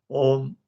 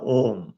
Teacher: यदि वो 3 की संख्या नहीं होती तो इसका उच्चारण होता ओम। यह ध्वनि कंठ से निकलकर ओष्ठ पर समाप्त होती है।